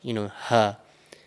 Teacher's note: Now the other ha, which is the circular ha, this ha actually comes from the bottom of your throat, so not the middle. So if you place your fingers on the bottom part of your throat over here and you pronounce ha as a very light, ha, you will feel this vibration in your throat over here.